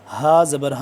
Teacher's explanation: یہ والا ہا ہے حلق کے آخری حصے سے، سینے کے پاس سے